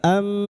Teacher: mim yang bertasdid guna kita dengungkan selama tiga harakat